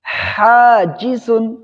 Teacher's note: حاجزن، پہلے جیم کے مخرج پہ دھیان دینا ہے، جیم کا مخرج زبان کا درمیان اور تالو کا درمیان، اور زا زبان کی نوک اور دونوں دانتوں کے اندرونی حصے سے۔